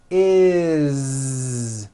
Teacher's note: Z is it doesn't matter that it's spelled with an S it's never s unvoiced never it's always is with a voiced Z okay do this with me put your hand on your throat